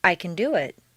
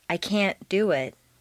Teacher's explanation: reduce the positive can to Kun and stress the verb make the negative can't sound very short and stress both can't and the verb this will contrast with the Positive emphasized can which is doubled